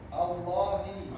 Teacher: But we pronounce only one lam.